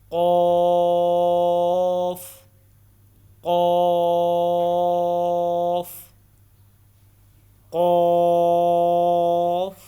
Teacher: قوف کو 3 سے 5 الف کے برابر لمبا کرنا ہے، اور قوف کو موٹا پڑھنا ہے